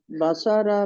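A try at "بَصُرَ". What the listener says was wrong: بسارا نہیں ہے، نہ نہ نہ، یہ بسارا نہیں ہے، یہ پیش والا. اس سب میں پیش لے کے چلنا ہے.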